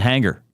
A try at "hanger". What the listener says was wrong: You're not saying the G at all, though. I don't hear it. Anger. So is anger different than hanger?